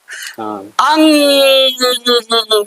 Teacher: अनुस्वर के उच्चारण में हवा केवल नाक से निकलती है